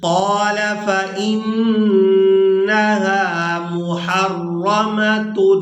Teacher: نون مشدد پر غنہ کریں گے